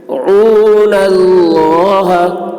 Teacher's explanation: اللہ کا لام پر ہوگا